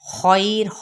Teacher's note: خیر لی یہ پر ہے اور یہاں پہ یا لین کا قاعدہ ہو رہا ہے، اور یہاں پہ جب ہم وقف کریں گے تو وقف بالاسکان ہوگا اور ساتھ ہی را ساکن کر دیں گے، را ساکن ما قبل ساکن ما قبل فتحہ، تو پھر یہ را پر پڑھا جائے گا